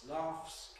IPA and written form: lɑːfs (laughs)